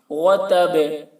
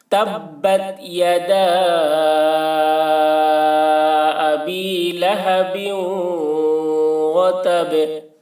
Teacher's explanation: تبت، تبت یدا، دال کو کھینچیں گے، تبت یدا ابی لہب، یہاں پر غنہ کریں گے، لہب وتب، با میں یہاں پر قلقلہ ہوگا، وتب، با کی آواز ٹکرا رہی قلقلہ کے ساتھ میں